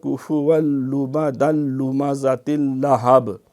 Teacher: یہ سارے اس میں ادغام آئے ہیں اور بغیر غنے کے ہیں، لام اور را میں یہ ادغام تام اور کامل ہوتا ہے